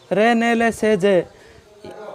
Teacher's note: 10वां अपने हैं रे ने ले से जे, इन 5 वर्णों का उच्चारण स्थान होता है वर्तस्य यानी मसूड़े।